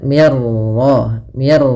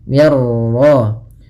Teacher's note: Idgam itu memasukkan maka masukkan nun ke ro sehingga suara nunnya hilang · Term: idgam kamil